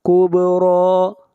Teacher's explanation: با کے اوپر قلقلہ اور را کو کھینچ کر پڑھیں گے اور را کو موٹا پڑھیں گے۔